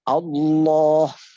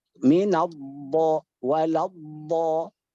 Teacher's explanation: Allah menyentuh gusi gigi seri atas. Tapi kalau dhad min Allah waladha itu langit-langit atas yang disentuh oleh ujung lidah.